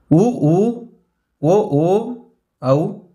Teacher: வாய் திறக்கும் முயற்சியுடன் இதழ்களை குவிப்பதால் பிறக்கும் உயிரெழுத்துக்கள்